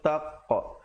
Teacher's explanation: Dan qaf bila kita pantulkan, kita bulatkan mulut. Jangan pepeskan. Kalau pepes jadi taqa, tak mau. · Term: pantulan